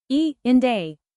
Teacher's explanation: the tongue moves from mid-front to high front and the lips are slightly spread.